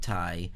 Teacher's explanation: we have t and then y right we have that semivowel at the end